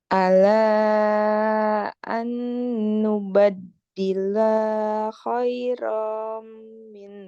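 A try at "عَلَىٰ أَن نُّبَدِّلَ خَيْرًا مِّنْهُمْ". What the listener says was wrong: nubaddila, lahnya pendek. Ala an nubaddila khairam minhum.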